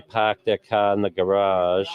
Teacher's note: You drop the R's essentially.